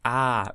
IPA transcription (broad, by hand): a